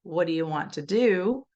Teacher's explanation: if I say what do you want to do, then I stress the do at the end, but in the middle that do sounded nothing like the do at the end.